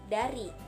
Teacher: Ciri-cirinya hidup, oral, apikodental, plosif.